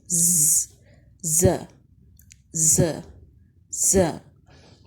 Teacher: زبان کی نوک جب اوپر نیچے والے دانتوں کے اندرونی کناروں سے لگے، جبکہ زبان اور دانت کے درمیان فاصلہ ہو تو وہاں سے زا ادا ہوتا ہے۔